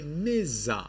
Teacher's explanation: instead of Madja you say Niza you change this ah into e there is a change in the vowel